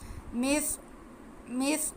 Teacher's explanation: صاد کو موٹا کر کے سیٹی کی آواز کے ساتھ پڑھیں گے، کیونکہ یہ حروف مستعلیہ ہے۔